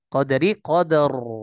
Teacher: dia baca dengan tafkhim dengan tebal